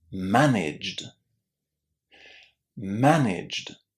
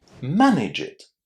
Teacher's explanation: we are putting the j sound, the same sound as we've got at the beginning of the word gym, j, and then we immediately follow it with the d sound. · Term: jd